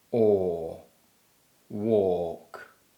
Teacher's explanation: the or sound is produced with the back of the tongue raised slightly and the lips rounded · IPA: /ɔ:/